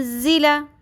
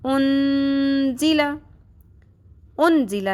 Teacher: نون ساکن کی آواز کو چھپا لیں گے اور لمبا بھی کریں گے ، ان نہیں پڑھیں گے، ان زیلا نہیں پڑھیں گے، کیا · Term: اخفا